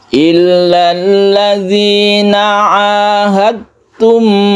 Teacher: Jadi ini melebur ke ta, tidak kita pantulkan dalnya ya. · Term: idgham mutajanisen